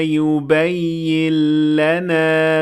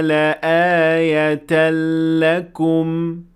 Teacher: اس مثال میں ہم نے یبین لنا کہا اور یبین لنا نہیں کہا۔ نون مکمل طور پر لام میں مدغم ہو گیا، اسی لیے لام پر شد ہے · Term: ادغام